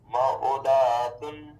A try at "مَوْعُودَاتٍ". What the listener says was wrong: موعودتن. دال کو نہ کھینچیں. موعودتن. دیکھیں آپ دال کو کھینچ رہے ہیں. دال میں کون سا قاعدہ ہو رہا ہے؟ حرکات کو کھینچتے ہیں. اس میں اس طرح پڑھیں نا.